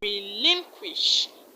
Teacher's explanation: Now, the word relinquish. Relinquish, the stress is on LIN, lin.